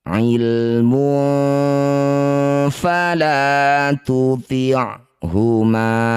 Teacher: Bunyi dumah tanwin dengungkan dua harakat. Ketika dengung ujung gigi seri atas sudah nempel di perut bibir bawah. Bersiap bunyikan fa ilmun fala tu'huma. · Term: ikhfa